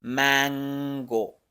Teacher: para hacer mango al terminar la sílaba mang la parte media de la lengua sube al paladar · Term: n velar